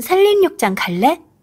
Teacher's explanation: 산림의 경우에는 니은과 리을의 연쇄가 일어났더니 결국 리을, 리을 발음이 되더라. 즉 앞에 있는 니은이 리을로 변화한 케이스죠. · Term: 유음화